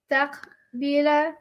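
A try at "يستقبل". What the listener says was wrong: So why you say yastaqbila? It says yastaghfiru. You said yastaghfiru, right? So why are you saying yastaqbila? Why are you ending it with a? Present tense should end with u. Shouldn't it end with u? You see what you're doing wrong?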